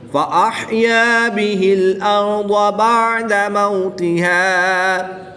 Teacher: ضاد حروف مستعلیہ میں سے ہے، اس کو پر یعنی موٹا پڑھیں گے۔